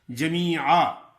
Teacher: جمیعا، جیم پر زبر ہے، میم پر زیر ہے اور آگے یا مدہ ہے. جمیعا، زبر کی تنوین ہے تو رکیں گے تو جمیعا ایک زبر الف کے ساتھ ادا ہوگی